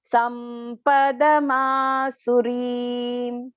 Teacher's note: Sampadama long, and then the su is short here, but the re has to go long. It is a long pronunciation.